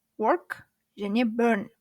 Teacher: Жай ғана тілдің ұшымен толық р демей р деп қана айтамыз.